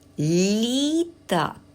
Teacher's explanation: в слові літак Ми чуємо м'який звук ль на початку слова